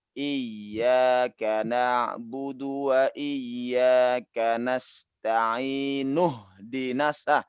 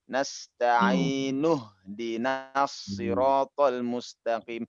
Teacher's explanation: Jadi hamzahnya udah nggak dibaca lagi. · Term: hamzah wasol